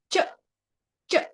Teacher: ಅಂತ ಕರೀತಾರೆ ನೋಡಿ ಚ ಅಂದ್ಬಿಟ್ಟು ಅದು ಮೇಲ್ಗಡೆ ಹೋಗಿ ತಾಗುತ್ತೆ ಚ ಚ ನಮ್ಮ ನಾಲಿಗೆ ಹೋಗಿ ಅಂಗಳಕ್ಕೆ ತಾಗುತ್ತೆ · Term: ತಾಲವ್ಯ